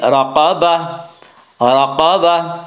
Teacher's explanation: گول تا پر جب وقف کریں گے تو گول تا وقف کی صورت میں ہائے ساکنہ بن جاتی ہے